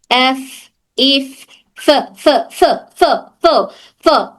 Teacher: फ का मखरज है हमारे ऊपर के दो दांत और नीचे का हंठ नीचे की होठ की तरी तो ऊपर के दोनों दांत नीचे की हंठ की तरी को टच कर कर हर फ अदा होता है